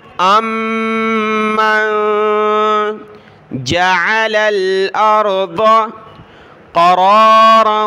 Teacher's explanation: یہاں نون پر اخفا ہوگا، کیونکہ نون کے بعد اگلا حرف حروف حلقی کا حرف نہیں ہے